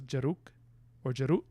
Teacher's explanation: i remember the k is a glottal stop